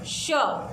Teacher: तालव्य श, उसमें आप तालु का इस्तेमाल करते हो, ठीक है, तो वो है श।